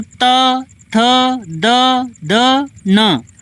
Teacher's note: जो आपकी जुबान है वह ऊपर वाले दांत से लग रही, जैसे कहते त, थ, द, ध, न, तो सारे के सारे अक्षर दांत से लग रहे, दंत हो जाएगा ना, दांत की सहायता से बोलते हैं तो दंत हो जाएगा।